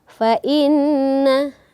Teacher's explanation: Nun yang bertasdid tentu kita membacanya itu harus berdengung · Kemudian ayat yang kelima, fa inna, kita menemukan nun yang bertasydid. Tentu kita membacanya itu harus berdengung dan tingkatan dengungnya itu paling utama, paling atas